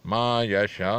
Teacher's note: 4 second के बराबर, 4 हरफ के बराबर हम इसे लंबा कर रहे हैं, यानी तकरीबन 4 सेकंड तक।